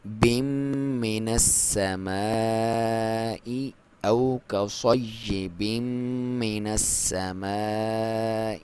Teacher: یہ مد جائز مد واجب ہے، اور اس کی لمبائی 2 سے 5 الف تک آپ کر سکتے ہیں۔ اور حمزہ کو کلیئر، من السماء، سین پہ دباؤ کے ساتھ آپ پڑھیں گے اس کو۔